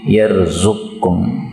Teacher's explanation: qaf ketemu kaf boleh idgham menjadi yarzuqkum